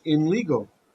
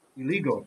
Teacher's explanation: you see the n sound it copied the sound of the letter that was next to it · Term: assimilation